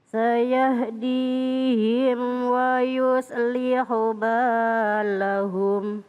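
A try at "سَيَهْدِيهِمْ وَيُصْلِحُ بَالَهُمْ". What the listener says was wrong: Insya Allah mudah, tapi jangan sampai salah memanjangkan.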